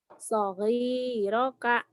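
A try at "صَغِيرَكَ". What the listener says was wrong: Kurang di rohnya. Sogiroka gitu.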